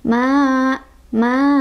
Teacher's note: Maluhu wa ma, ma ketemu lagi sama mad thobii, sebabnya karena ada alif didahului oleh huruf yang berbaris fathah, yaitu di atas huruf mim ya. Makanya cara bacanya adalah dipanjangkan dua ketukan